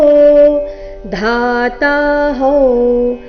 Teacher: ಧಾತಾಹಂ ಧಾ ಮಹಾಪ್ರಾಣ ದೀರ್ಘ ಧಾತಾಹಂ ಅನುಸ್ವಾರ ನಾಸಿಕಾವ ರೀತಿ.